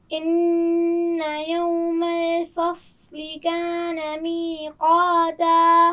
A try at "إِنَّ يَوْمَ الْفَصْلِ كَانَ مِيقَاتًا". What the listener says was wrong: یوم الفصل، لین کو ٹھیک طرح ادا کیجیے. یوم الفصل، پھر پڑھیے.